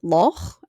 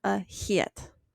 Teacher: those are two different sounds. And it's just one is broad, loch, and one is slender, a hiet.